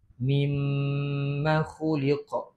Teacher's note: Qalqalah kubra. Kita kena baca kuat sikit dia punya qalqalah, detakkan khuliq.